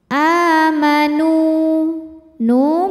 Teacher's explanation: karena ada wau mati didahului harakat damah cara membacanya dipanjangkan nunnya dua harakat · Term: Mad Thobi'i